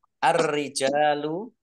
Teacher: Ar-rijalu ini alif lamnya ya tidak dibaca. Langsung masuk ke huruf ro. Alif lam samsiyah.